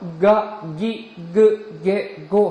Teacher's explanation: 그 상태에서 기, 그, 게, 고 해보세요. 그러면 성대가 부들부들 바이브레이터처럼 떨리는 것을 여러분 느낄 수 있을 겁니다. 그래서 기, 그, 게, 고 이와 같이 성대가 떨리는 유성음, 이것을 우리는 타금이라고 합니다.